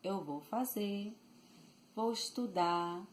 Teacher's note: It's just lighter, okay? So, it's a tendency to leave the R out of the word at word end